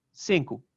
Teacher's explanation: another example of penultimate stress is in the word for five cincu uh which only has two syllables so it's saying that